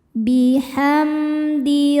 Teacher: idhar syafawi sebab mim sukun bertemu dengan selain mim dan ba, yaitu huruf dal. Dibaca mimnya jelas.